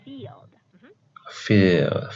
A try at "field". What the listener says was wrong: I have noticed that for the F sound, not P sound.